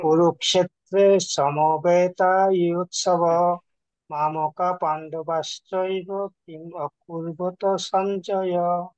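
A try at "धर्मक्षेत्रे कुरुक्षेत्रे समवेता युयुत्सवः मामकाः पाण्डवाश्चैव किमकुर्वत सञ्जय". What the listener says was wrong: এত ফাস্ট বললে হবে না, ছন্দে ছন্দে বলতে হবে। বিসর্গ আছে না?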